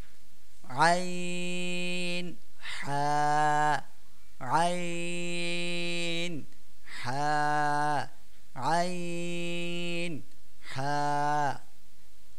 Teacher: 2 নম্বর মাখরাজ হলকের মধ্যখান হইতে আইন হা